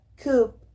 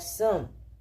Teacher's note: una vocal medio abierta, central, que se emite sin redondear los labios. Su ortografía también más común es U, como en la palabra cup, o como en la palabra son.